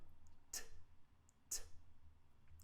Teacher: No vibration. I'm not using my vocal cords to make this sound. So, T is partially blocked and it's unvoiced.